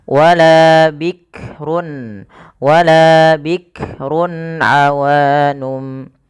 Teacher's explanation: Ya, hati-hati dalam melafalkan huruf kaf tidak langsung bikrun bik jangan sampai memantulkan huruf kaf karena kaf tidak punya sifat qalqalah